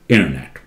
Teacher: Somehow this T is almost swallowed after N.